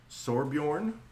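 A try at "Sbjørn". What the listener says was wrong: Sorbjorn. Sorbjorn. Or just Sobjorn. I don't think there's an R in there. Sobjorn.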